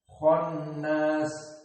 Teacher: Maka kha di sini dari huruf al-mufakhamah dibaca mufakhamah.